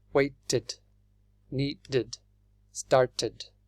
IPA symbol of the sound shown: id